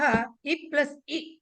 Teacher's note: రెండు హ్రస్వ ఇకారాలు తర్వాత వచ్చేది దీర్ఘ ఇకారము